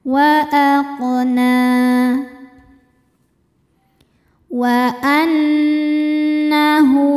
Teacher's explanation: Na hukumnya mad thobi'i muqaddar. Karena ada nun dengan harakat fathah panjang. Cara bacanya panjang dua harakat.